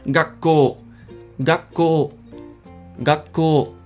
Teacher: you may be able to notice that the K is actually doubled and the O at the end is actually lengthened